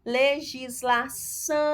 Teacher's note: Você observa aqui que o são é a sílaba tônica.